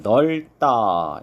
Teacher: 리을 비읍일 때 이런 경우 비읍으로 소리가 안 나고 리을로 발음이 된다. 그래서 넓다 이렇게 발음을 해야 되겠죠.